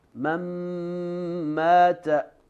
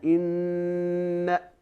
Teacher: Or inna with the noon mushaddad, we do 2 counts of ghunna. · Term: most complete ghunna